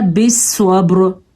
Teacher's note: स्वाद को हमने पुर पढ़ा है क्योंकि स्वाद पे ज़बर है, बा पे हमने कलकला किया है क्योंकि बा हुरूफ़े कलकला में से है।